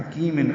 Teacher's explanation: حکیم ہا وسط حلق سے ادا کریں گے، کاف باریک ہے. کی یا مدہ ہے، 2 حرکات لمبا کریں گے.